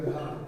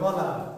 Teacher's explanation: তো যখন আপনি ঘাড় বলছেন ঘ, তখন দেখেন একটু বাড়তি একটু প্রেশার দিতে হচ্ছে। গ অনেকটা সহজে বলা যাচ্ছে।